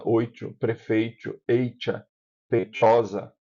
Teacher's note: No Nordeste, esse som africado vai acontecer, pelo menos aqui em Alagoas acontece assim, quando ele vem com a vogal, com o ditongo antes da letra. Por exemplo, a gente aqui costuma dizer oito, o ditongo está antes e ele causa a, a mudança.